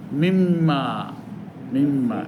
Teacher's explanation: নুন সাকিনের পরে মিম আসছে, এখন ওই নুনটা মিম হয়ে যাবে,